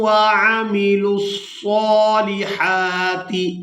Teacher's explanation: یہاں لام کو صاد مشدد کے ساتھ ملائیں گے، واو کو چھوڑ دیں گے